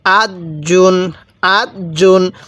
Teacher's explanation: আমি প্রত্যেকটি তানবিনের শেষে আমি দন্তান্না উচ্চারণ করছি। বাংলায় যেমন দন্তান্না উচ্চারণ হয়, যেমন এখানে জিন বলছি দন্তান্ন উচ্চারণ হয়েছে, যেমন এখানে জুন বলছি শেষে দন্তান্ন উচ্চারণ হয়েছে।